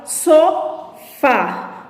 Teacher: o agudo ela indica que a vogal é aberta · Observe que a pronúncia sofá, ela tem um tom, um som mais que aberto